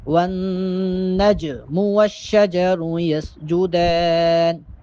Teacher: اور والنجم، جیم چونکہ ساکن ہے اور جیم حروف قلقلہ میں سے ہے، حروف قلقلہ 5 ہیں، قوف طا با جیم دال، تو ان میں چونکہ جیم بھی ہے اور جیم یہاں پر ساکن ہے، لہٰذا جیم پہ قلقلے کی آواز پیدا ہو۔